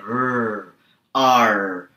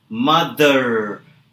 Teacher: The biggest difference between us and the Americans and the Britishers is the Americans tend to roll their R's. Now, in order to do this, every time you say the letter R, you need to put the tongue to the top of your mouth and roll.